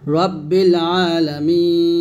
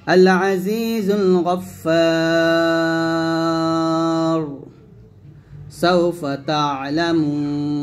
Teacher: মিতে 3 আলিফ টান দিয়ে নুনটাকে সাকিন করছি, কারণ মদের হরফের পরের হরফে আমি সাকিন করছি। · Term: মধ্যে আরজি